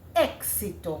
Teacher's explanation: Even though it is EX. You are hearing the K and the S coming out.